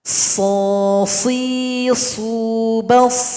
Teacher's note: huruf shad ini dibaca tebal karena dia bersifat isti'la. Suara kita naik ke langit-langit. Dan juga bersifat itsbaq.